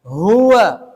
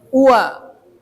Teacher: harus nampak huruf h-nya jangan jadi ua